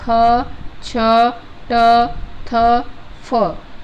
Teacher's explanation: अघोष महाप्राण में आता है ख, छ, ट, थ, फ, यानी प्रत्येक जो वर्ग है, ठीक है, प्रत्येक वर्ग का दूसरा वर्ण जो होता है वो किसके अंतर्गत आता है, अघोष महाप्राण के अंतर्गत आता है